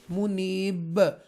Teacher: منیبی ندخلوها، وقف کی صورت میں منیب، منیب، ب، یہ حروف قلقلہ میں سے با بن جائے گا، اس لیے یہ ایسے ادا کریں گے. با زیر بی کو با ساکنہ میں چینج کریں گے